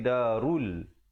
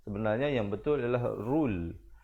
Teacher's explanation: Ra baris depan bunyi ru. Ramai orang bunyi seakan-akan ra baris depan dibaca ro, bila bertemu lam jadi roll. Sebenarnya yang betul adalah rul. Darul 2 harakat.